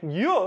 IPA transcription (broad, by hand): j